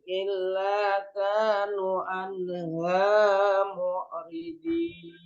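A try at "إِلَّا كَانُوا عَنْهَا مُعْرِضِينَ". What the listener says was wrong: Diulang. Illa kanu, nu dibaca panjang.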